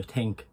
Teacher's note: I took away the TH sound and I just made it like a T. So think. It's very light. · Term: TH sounds